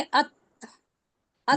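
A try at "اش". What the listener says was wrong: नहीं नहीं, शीन शीन है, शीन है, शीन है, शीन 3 नुक्ते हैं, हाँ कैसे पढ़ेंगे। हमस है ना, हमस में वक्त ज्यादा लेते हैं, कम लेते हैं,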